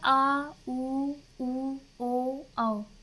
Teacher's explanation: पश्च स्वर आ उ ओ औ, यानी देखिए प्राणवायु जो है पीछे की तरफ से निकल रही है